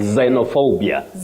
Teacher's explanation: Also, consonant letters can take different sounds in English. So this is an X, but you pronounce it as the voiced sound Z.